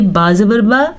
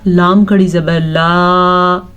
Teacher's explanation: زبر اور کھڑی زبر ان دونوں کے فرق کو واضح کرنے کے لیے با زبر با، لام کھڑی زبر لا، اتنا فرق ہے دونوں کی مقدار میں۔ بلا اکثر لوگ جو زبر کو لمبا کر کے یا کھینچ کے پڑھتے ہیں، یہ ان کے لیے سمجھایا میں نے۔